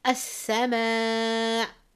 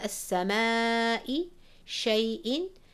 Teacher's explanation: If I'm stopping, then I press a little bit hard on that hamza, which is called Nabr. Shay'. Again, I'm pressing hard on the hamza.